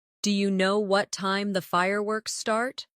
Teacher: Do you know what time the fireworks start? Do you? Sounds like dia in fast speech.